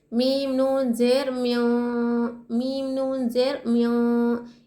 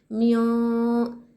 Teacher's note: इख्फा यानी नून को हम नाक में छुपाएंगे।